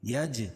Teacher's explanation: جیم پر قلقلہ، کیونکہ جیم کے اوپر جزم ہے اور یہ حروف قلقلہ کے 5 حرفوں میں سے ہے۔